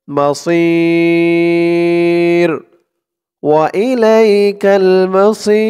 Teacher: এখানে থামার কারণে জেরের পরে ইয়া সাকিন প্রথমত এক আলিফ টান ছিল তারপরে থামার কারণে এটা 3 আলিফ টান হয়ে গেছে